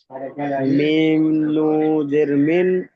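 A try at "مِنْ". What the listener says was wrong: নুন উচ্চারণ করুন ভালোভাবে। দেখুন, মিম নুন লাম জের মিল। সাকিনের পরে যদি কোনো অক্ষরের উপরে তাসদিদ আসে, তাহলে তাকে নুন সাকিনের সঙ্গে ধরে পড়তে হবে এবং নুন সাকিনের আওয়াজ উচ্চ হয়ে যাবে, ঠিক আছে?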